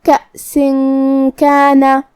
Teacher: کلمت من کے آخری میں نون ساکن ہے، پھر حرف الکاف ہے، کاف حروف الاخفاء میں سے ہے اور اخفاء کا معنی ہے چھپا دینا، تو ہم یہاں نون ساکن کو چھپاتے ہوئے اور غنہ کے ساتھ یہ حکم کو ادا کریں گے